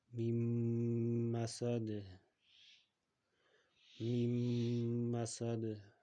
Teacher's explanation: buni gunna bilan o'qiymiz ya'ni nunni g'unna qilib ushlaymiz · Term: g'unnali idom